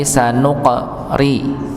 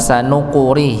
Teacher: qaf dengan sukun maka dipantulkan sanuqari. Bukan sanuquri, tapi sanuqari.